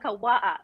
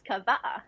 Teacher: the W's in Hawaii is pronounced like a V so every word instead of saying W you say V so